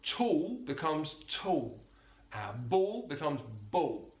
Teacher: He uses the vocalization of the dark L.